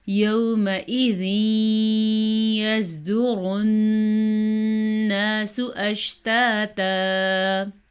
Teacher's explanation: نون ساکن اور نون تنوین کے بعد یا میم واو نون میں سے کوئی حرف آ جائے تو وہاں پہ ادغام بالغنہ ہوتا ہے، یعنی کہ ملا بھی دیا جاتا ہے شد ڈال کے اور غنہ بھی کرتے ہیں